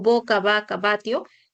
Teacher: representan al fonema oclusivo bilabial sonoro